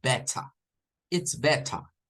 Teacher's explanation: pero el británico no suena la R al final